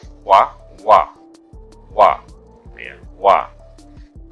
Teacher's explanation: dua bibir yaitu membulat menutup rapat